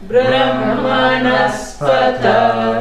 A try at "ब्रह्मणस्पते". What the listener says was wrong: I'm not hearing the ha. Brahmanaspata, no. Brahmanaspata, Mahaprana.